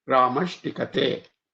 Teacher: that sh with a t becomes shti